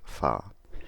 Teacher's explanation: A fricative, where airflow is forced through a narrow channel.